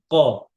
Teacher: 4 নম্বর মাখরাজ হচ্ছে জিহ্বার গোড়া, তার বরাবর উপরে তালুর সাথে লাগায় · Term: কফ